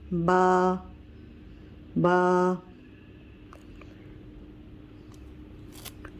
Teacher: با دونوں ہونٹوں کے، یہ دونوں ہونٹوں کے اندر تر والے حصے سے، یہ تر والا حصہ جو ہے، اس والے تر والے حصے سے با ادا ہوتا ہے.